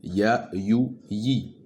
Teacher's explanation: La différence entre ces lettres est que pour prononcer le ya, le milieu de la langue se rapproche fortement du palais dur, mais sans le toucher. · Pour le ya, il n'y a pas de souffle. Donc pour le shin et le ya, le milieu de la langue se rapproche du palais dur, mais ne le touche pas, à la différence du jim.